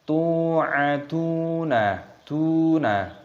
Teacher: Tu ada wawu sukun, huruf sebelumnya berharakat dhammah, maka dibaca mad tabi'i, panjangkan 2 ketukan.